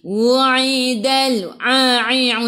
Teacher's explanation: A'i'u daripada kerongkong bukan daripada hidung